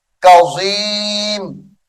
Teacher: زا کے ساتھ نہیں پڑھنا زوا کے ساتھ یعنی موٹا کر کے پڑھیں گے